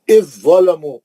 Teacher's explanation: اب زال نہیں پڑھیں گے، سیدھا زوئے میں چلے جائیں گے